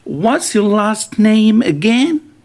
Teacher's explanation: All right, you can see the last word is rising.